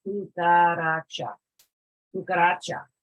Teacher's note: Normally, accents are placed, or the emphasis is placed on the second to last syllable